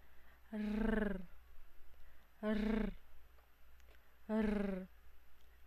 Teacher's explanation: Ang letrang R ay panggilagid at pakatal